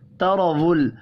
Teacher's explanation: را زبر کی وجہ سے پر پڑھیں گے